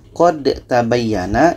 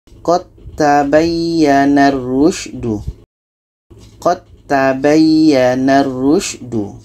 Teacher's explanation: Maka di sini hukum asalnya dal mati ini qalqalah tidak jadi. Okey, dal yang hukumnya qalqalah tidak dibaca karena qa ini terus masuk ke huruf ta